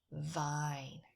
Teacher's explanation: So for v as in vine, it's like the f in pinyin, but our voice box is on. So we say, it's the same placement as f, but we say vine. Our voice box is on.